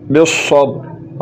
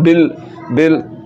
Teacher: یہاں پر ص مشدد ہے تو با کو ص کے ساتھ ملانا ہے اور بص بس پڑھنا ہے اگر اپ نے بال پڑھ لیا